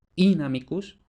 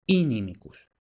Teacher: La explicación de esto es que este acento de la primera sílaba sería tan fuerte que las siguientes vocales llegaban a perder fuerza articulatoria y así llegaban a cambiar de timbre. Entonces esa A, inamicus, pasaba a I, inimicus. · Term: apofonía